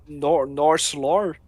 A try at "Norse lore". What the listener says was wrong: It's like you're saying North Florida.